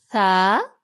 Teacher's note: ثا زبان کی نوک سامنے والے دانتوں کے کناروں سے لگے